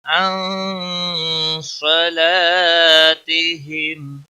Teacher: نون ساکن کے بعد حروف اخفا کا صاد آیا ہے، لہذا نون ساکن پر اخفا ہوگا۔ ہم اخفا کے معنی ہوتے ہیں گناہ، یعنی گناہ کے ساتھ نون پر صاد کو موٹا پڑھیں گے، لا صلا الف مدہ ہے، ایک الف کے برابر کھینچ کر پڑھیں گے، تیہم اس اخفا کو اخفا حقیقی کہتے ہیں۔